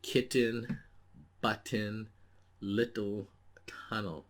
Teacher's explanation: you do not hear the vowel in the second syllable which is unstressed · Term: vowel like consonant